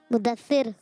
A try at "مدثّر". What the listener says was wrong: مدثر آئیے آپ کو صحیح بتاتے ہیں یہ دیکھیں یہ لکھا ہے مدثر یہ درست نہیں ہے یہ درست نہیں ہے بلکہ دال پر آئے گی تجدید تو ہوگا مدثر دال پر کیا آ جائے گی تجدید آ جائے گی تو ہوگا مدثر صحیح ہے مدثر ٹھیک نہیں ہے دال پر بھی تجدید ہے اور سا پر بھی تجدید ہے تو مدثر ٹھیک نہیں